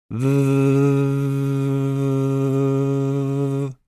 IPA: ð